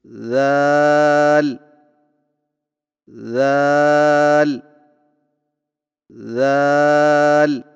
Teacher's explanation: ذال کی ادائیگی میں زبان کی نوک کو سامنے والے اوپر کے دو دانتوں کے اندرونی کناروں سے نرمی سے لگا کر باریک آواز میں پڑھیں، یعنی ذال ذال ذال۔